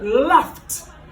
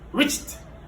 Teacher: ED qui est prononcé en T pour le voiceless. Quand il n'y a pas de vibration. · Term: le son T